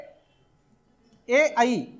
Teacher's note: कंठ आणि तालव्य या दोघांच्या मदतीने ए आणि आई चा उच्चार होतो कंठाचा पण उपयोग होतो आणि तालव्यचा मग आता हे कसं लक्षात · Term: कंठ तालव्य